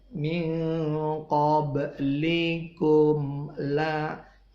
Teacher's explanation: mim matinya bibir atas bibir bawah ketemu langsung lepas lagi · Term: idhar syafawi